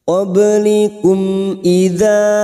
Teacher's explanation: mim sukun bertemu hamzah, namanya idhar safawi, dibaca jelas tanpa mendengung